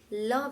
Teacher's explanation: ऐसे व्यंजन जिनके उच्चारण में जीभ तालू को छुए तथा श्वास वायु बगल से गुजर जाए वह पार्श्विक व्यंजन कहलाते हैं अर्थात ऐसे व्यंजन जिनका उच्चारण जब हम लोग करते हैं तब